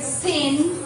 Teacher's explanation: So this sound is nasal. So this one becomes a nasalized vowel. Because of its environment.